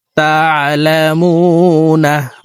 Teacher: এখানে তিন আলিফ টেনে নুনকে সাকিন করব